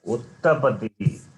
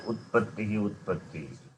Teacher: You didn't pronounce the letter ta, which is after ut, before pattihi.